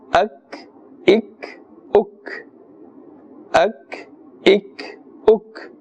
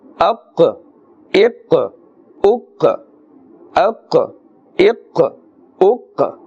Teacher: Kaf has more of a flat sound, a thin sound, and qaf is pronounced with a full mouth because it is part of the huruf musta'aliyah and it is part of the huruf qalqala, the qalqala letters, and therefore you can hear that slight echoing or bouncing sound because this is the qaf with a jazm upon it.